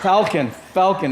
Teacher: if you say falcon in pidgin the a becomes round